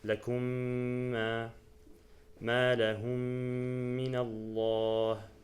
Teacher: So you disregard the first Meem and you put a shadda on the second Meem, and then you give it a complete ghunnah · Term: idgham